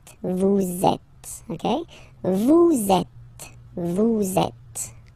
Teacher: vous is ending with S, and then you tend to make a little link between them. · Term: liaison